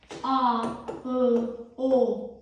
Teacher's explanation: Dilin arxa hissəsində yaranan saitlərə biz deyirik qalın.